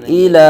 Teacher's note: حمزہ زیر ای لام کھرا زبر لا، ایلا کھرا زبر قائم مقام الف مدہ، ایک الف تک کھینچ کے پڑھیں گے